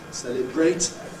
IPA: ˈseləbreɪt